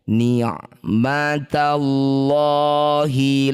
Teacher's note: Lafaz Allah atau lafzul jalalah jika didahului harokat fathah atau dhammah maka lamnya kita baca tafkhim. Baca dengan tebal ganti jadi lo.